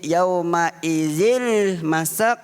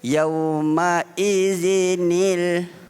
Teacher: Dia tak boleh yauma izil masak, salah. Dia mestilah menambahkan nun yang berbaris bawah.